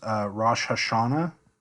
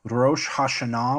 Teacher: Biblical Hebrew accented the final syllable